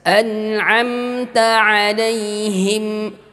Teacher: Ta di sini adalah syiddah, ujung lidah dengan pangkal gigi dari atas.